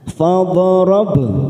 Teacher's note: ada huruf ba sukun, namanya qalqalah sugro. Kita pantulkan